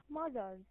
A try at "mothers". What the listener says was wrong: Mothers. So how we pronounce it? Z or S? No, Z. It should be Z. Mothers. Z. So this is Z. Mothers because we have R.